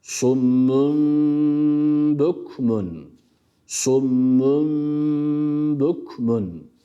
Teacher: B'ye bağladık Ama bu geçiş esn ne yaptık Önce bir Mim bu tenvin önce Mime dönüştü önce bir Mim Daha sonrasında B'yi harekesi okuduk